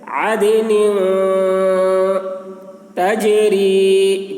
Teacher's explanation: نون میں اخفا ہوگا، یعنی نون کی آواز کو ناک میں لے جا کر چھپائیں گے